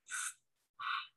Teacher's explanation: Hak yang ada itu adalah bunyi seperti bunyi kita kepedesan. Atau ketika kita lagi nyeruput kopi, kepanasan. Nah, gitu. Bunyi haknya itu bersih. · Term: hak kecil